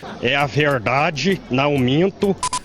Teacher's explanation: uma coisa que se usa muito é o R retroflexo